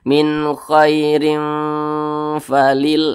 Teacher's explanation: maka cara membacanya disamarkan kemudian juga didengungkan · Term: ikhfa